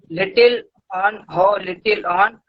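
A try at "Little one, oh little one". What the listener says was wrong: ऑन नहीं है, 1 होता है।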